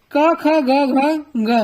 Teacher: ये आप मुख के किसी पार्ट से नहीं बोल रहे हैं, ये आप कंठ से बोल रहे हैं